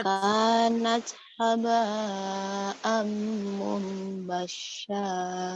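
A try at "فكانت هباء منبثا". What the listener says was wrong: Hanya sa tipis cedal cadel. Iya, sa cedal cadel. Fakanat haba'am mumbassa.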